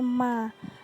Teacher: Makhraj huruf mim terletak pada merapatkan kedua bibir disertai dengungan dan rongga hidung.